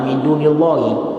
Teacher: tarkikul lam karena baris kasrah baris bawah sebelum lafzul jalalah Allah